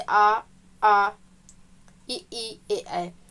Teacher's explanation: स्वरों को दो भागों में विभाजित किया गया है आवृत मुखी जिन स्वरों के उच्चारण में ओठ वृत्त मुखी या गोलाकार नहीं होता है आवृत मुखी स्वर कहलाते हैं